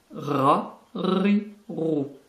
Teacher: La lettre suivante est le ra. C'est un R qui est roulé.